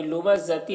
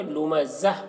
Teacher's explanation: یہاں پر وقف کریں گے تو وقف کی صورت میں یہ گول تا کو ہائے ساکنہ سے بدل لیں گے